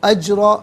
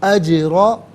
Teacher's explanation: انا لا نضیع، انا لا نضیع اجر، را پر زبر ہے، را کو پر کر کے پڑھیں گے، جیم ساکن ہے لیکن حرف قلقلہ ہے تو آواز لوٹتی بھی محسوس ہونی چاہیے